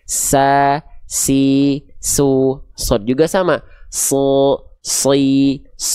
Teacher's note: huruf shad dan huruf sin sama-sama punya sifat namanya shofir. Sofir itu artinya dia berdesis ya. Berdesis ada berdesis ada desisannya.